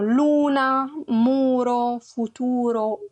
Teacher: Anche la U è chiusa, è pronunciata chiusa.